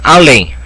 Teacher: Olha a tonicidade no LEM. Então é uma oxítona terminada em EM.